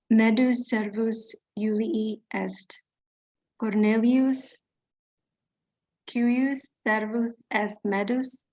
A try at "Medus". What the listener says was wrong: Medus. Long E.